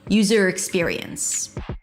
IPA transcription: ˈjuːzəɹ ɪkˈspɪɹiəns